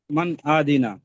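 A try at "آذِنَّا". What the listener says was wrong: আদি হবে না, আজি আজি, এটা জাল। মান আজিনা, হ্যাঁ,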